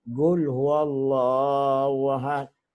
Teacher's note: they cannot pronounce qaf. They will say gul.